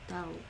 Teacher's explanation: Glottis stop at the end. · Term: hamza